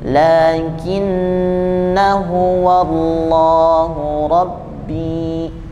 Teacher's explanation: maka bacaannya dihiraukan alifnya madnya dihiraukan menjadi lakinuallahubi itu untuk berlaku untuk semua yang ada ee bulatan